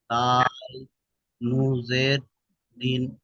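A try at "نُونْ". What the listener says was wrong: আসলে আপনি নু বলছেন, নু হবে না, নুন, নুন, হ্যাঁ, নু বলছেন, নু,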